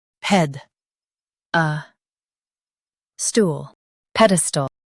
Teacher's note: Focus on ped and soften stall.